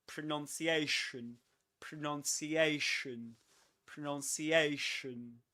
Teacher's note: It begins with a schwa, so that's why you nearly open your mouth. You barely open it. You say pronunciation.